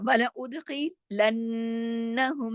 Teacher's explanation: اس کو ولا اس لیے نہیں پڑھ سکتے، اس کے الف کے اوپر تو پیش لگا ہوا ہے، تو یہ ولا اد، اد، ولا اد، دال پہ کلکلا، خا موٹا، ولا ادخلنہم، نون پہ تشدید ہے، غنہ ہوگا